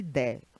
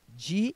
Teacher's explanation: Muda muito pouco, é só o E abrindo e o I fechando.